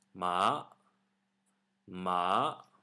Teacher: this basically starts at medium and arises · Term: the second tone